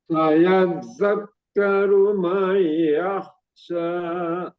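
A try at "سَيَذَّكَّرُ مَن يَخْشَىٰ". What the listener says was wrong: Mai-nya kurang tambah lagi.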